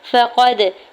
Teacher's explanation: فقد، فا کی زبر کو جلدی سے ادا کریں، قاف کی زبر کو دال ساکن کے ساتھ ملاتے ہوئے قلقلہ کریں گے